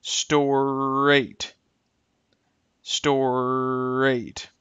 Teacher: notice how the r sounds will blend into each other